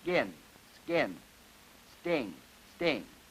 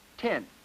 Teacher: the phone of T and K after S are lenis and unaspirated and won't blow out the match